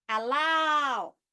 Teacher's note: We have the ultimate, which will be on the last vowel. For example, I say the word allow.